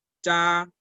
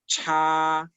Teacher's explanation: Cuando tenemos Z y ZH, no expulsamos aire. Pero cuando tenemos C y CH, sí expulsamos aire. Entonces, la ZH va a sonar cha sin aire, mientras que la CH suena cha.